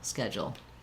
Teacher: This DU just makes the j sound like in jump. First syllable stress, so that syllable is longer, and the jul syllable is short and reduced with a syllabic L.